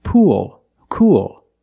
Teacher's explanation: you have the long u sound followed by the dark l